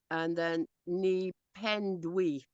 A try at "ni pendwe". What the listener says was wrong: Not ndwi. Ndwe. Ndwe.